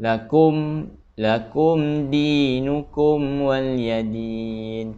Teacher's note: bacaan dia tidak boleh gunnah terbaca dengan jelas tanpa dengun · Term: izhar syafawi